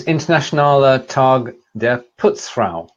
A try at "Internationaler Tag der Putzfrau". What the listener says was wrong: Internationaler Tag der Putzfrau, yeah.